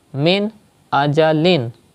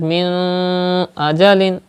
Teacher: That means when izhar is done, you have to read noon sakin or tanween without taking the sound into your nose